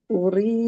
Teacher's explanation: Uri, rinya juga matobi'i, ya sukun sebelumnya kasroh. Rinya dibaca tapik atau ringan karena berharokat kasroh